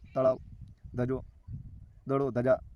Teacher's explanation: તો તળાવ, દડો અને ધજા આ બધા શબ્દો બોલો ત્યારે તમારી જે જીભ છે દાંતે અડે છે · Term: દંત્ય